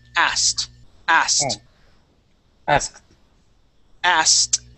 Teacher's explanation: the trick with the word asked, okay, is not to pronounce that K or the id sound